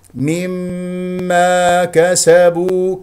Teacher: كسره الميم الاولى جيدا وافتح الفم في الالف التي بعد الميم المشدده